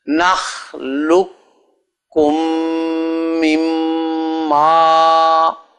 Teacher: وہ قاف جو ہے وہ تو کاف میں مدغم ہو گیا، دونوں مل گئے